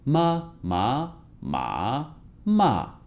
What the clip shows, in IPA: mā má mǎ mà